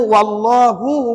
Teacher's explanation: alif lam aljalalah tafkhim ataupun tebal